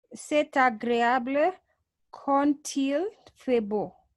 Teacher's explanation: When we have con followed by il, it's like we join D to I, and that produces a T sound to become quand-il fait beau.